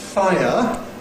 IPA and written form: ˈfaɪə (fire)